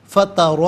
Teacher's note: فترا میں را پر زبر، را کو پر کر کے پڑھا جائے گا۔